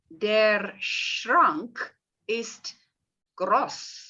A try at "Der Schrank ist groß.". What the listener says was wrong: Ja.